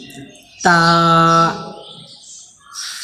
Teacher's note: زبان کی نوک اوپر کے دانتوں کے جڑ سے تا ادا ہوتے ہیں